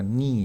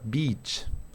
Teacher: tenemos esta y larga así que al pronunciarlo nuestros labios se hacen un poquitito hacia atrás como para una sonrisa